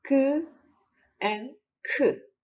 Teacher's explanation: Can you feel both sounds came from the back part? I mean the tongue root.